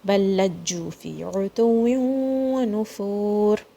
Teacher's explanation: This ra is going to be heavy.